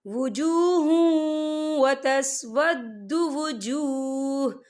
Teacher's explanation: یوم تبیض وجوہ وتسود وجوہ، یہ دیکھیں وجوہ، ہاں کے پر تنوین ہے، تنوین کے بعد جو ہے واو آ رہا ہے، اور واو جو ہے حروف یرملون میں سے ہے تو یہاں پر ادغام ہوگا، تو ہم اسے تھوڑا سا غنّے کے ساتھ پڑھیں گے